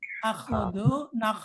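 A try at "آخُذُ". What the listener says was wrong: Panjangin. Akhudu. Tidak di A tapi akhudu panjangin A-nya. Jadi cuma satu dia pada saat akhudu itu panjangin. Di sini kan akhudu itu panjang ya.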